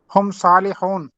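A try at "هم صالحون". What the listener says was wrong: آخری حرکت پوری پڑا کرے پلیز. آخری حرکت پوری. ہم صالحون.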